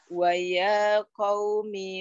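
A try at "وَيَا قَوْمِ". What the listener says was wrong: may yang ya-nya dua saja. Ya-nya kepanjangan, ya-nya dua aja. Ianya, oh, ianya panjangnya dua saja.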